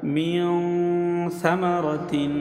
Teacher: যথা মিন সামারাতিন, মিন এই নুন সাকিন, নুন সাকিনের পরে সা হচ্ছে ইখফার হরফ, এই জন্য নাকের ভিতর লুকাইয়া গুণা করে পড়তে হবে